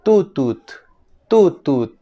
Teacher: en fonética se le conoce con el nombre técnico de oclusiva alveolar sorda la t suena como en el Castellano por ejemplo en la